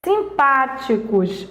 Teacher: em simpáticos é antepenúltima sílaba ela é uma proparoxítona